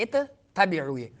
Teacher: میں ایک جنس کے آ جائے تو ایک کلمے کو دوسرے میں، جیسے یہاں دو تا ہے، اصل میں دو تا ہے، اتبعو، تو تا کو تا میں مدغم کر دیا تو اتبعو ہو گیا.